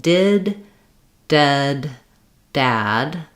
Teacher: these vowels are all vowels that happen towards the front of the mouth. So when I'm saying did, dead, dad, they all resonate in the front, and my tongue is going to be lifted up in the back.